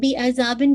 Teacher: یہ اظہار حلقی ہے، یعنی بن کی آواز بہت کلیئر ہونی چاہیے